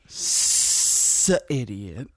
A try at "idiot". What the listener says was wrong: Did you just pronounce idiot with an S? Idiot?